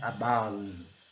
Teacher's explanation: Temos aqui o som do schwa, que é um som mais leve